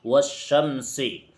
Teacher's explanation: جیسے والشمسی، دیکھیے الف بھی ہے لام بھی ہے لیکن ان دونوں کو ہی نہیں پڑھا جا رہا ہے بلکہ اس سے آگے جو شین ہے اس واو کو ڈائریکٹ اس شین کے اندر ملا دیا گیا ہے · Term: حروف شمسی